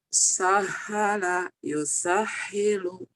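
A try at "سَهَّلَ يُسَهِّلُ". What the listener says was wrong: hanya ada jangan ada desah. Hadada alhaqumut jangan alhaqumut jangan alhaqumut ini ha gede. Sahala yusahilu sahala yusahilu ha gede jangan ngedesah.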